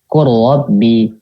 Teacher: Nah, lamnya nggak ada tuh. Jadi langsung masuk ke ro. Jadi idgham kamil gitu.